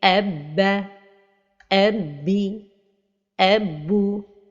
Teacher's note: Les erreurs de prononciation de la lettre lorsqu'elle porte shadda et les différentes voyelles, c'est de donner de l'air vers la fin de prononciation, ce qu'on appelle al-hams. Et c'est l'équivalent du murmure dans la langue française.